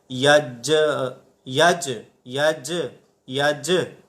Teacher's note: جیم کے اندر قلقلہ ہوگا، آواز ہمیں لوٹتی ہوئی محسوس ہوگی، ایسے جیسے یج یج یج یج، تو یوں آواز ہمیں لوٹتی ہوئی معلوم ہوگی۔